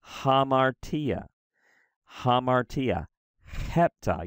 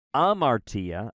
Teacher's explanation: you'll notice that I'm adding a little H there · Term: rough breathing mark